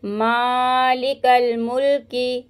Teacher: काफ को लाम के साथ मिलाएंगे